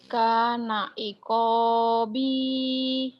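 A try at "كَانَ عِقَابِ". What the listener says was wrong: Pendek, kenapa panjang ujungnya? Pendek. Kana iqabi.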